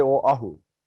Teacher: A lot of people put sort of a W sound in our island name and they say Oahu, Oahu, but there is no W in the name of our island. So there is an okina or there's a glottal.